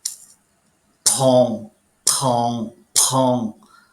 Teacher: uma aspiração você sente como se fosse um R nas audição parece que tem um R ali mas não tem R nenhum ele só tá sendo aspirado